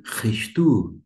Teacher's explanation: Tanto é que eu utilizei o CH alemão, o som, e pronunciei Christu, e não Cristo, porque eu sigo a pronúncia erasmiana, e o som aqui é de, como na palavra filho em alemão, ir, é um mais arrastado.